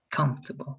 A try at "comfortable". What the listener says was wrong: It sounds different, but it's better if that O has less stress and you put more stress in the first and the last part.